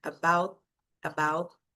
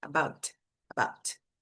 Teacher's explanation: você finge que vai falar o t, mas você não solta o som